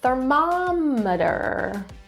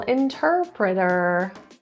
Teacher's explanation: stress in the second syllable